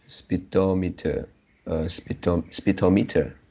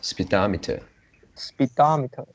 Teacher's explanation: the correct one should be the stress on the second syllable